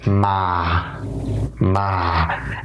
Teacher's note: all one has to do is just lower the voice a little bit just lower their voice